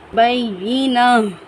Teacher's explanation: مل، بیشینہ، یا تشدید ہے، یا پر تشدید ہے، یا کو با کو یا کے ساتھ سختی کے ساتھ ملا کر پڑھیں گے اور ان پر تا، گول تا کو ہم ہا ساکن کی مانند پڑھیں گے